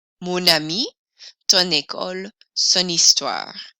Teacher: notice we pronounce the N sound more in mon to bring those sounds together